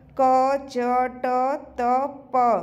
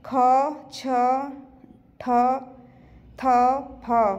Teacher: क च ट त प, यह आ जाएगा अल्प प्राण में, और महाप्राण में आ जाएगा ख छ ठ थ फ, ये महाप्राण में आ जाएंगे।